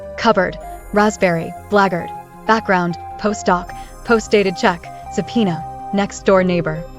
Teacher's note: you normally suppress one of the two adjacent stops that differ only in voicing